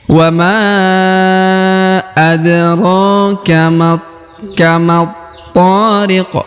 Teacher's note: maka huruf Ma langsung melebur atau masuk ke huruf tho · Apabila bertemu dengan huruf seperti ini atau berharokat tasdid seperti ini, maka huruf ma langsung melebur atau masuk ke huruf to